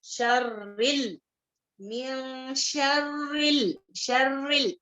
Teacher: रा कसरा के साथ है, इसको बारीक पढ़ेंगे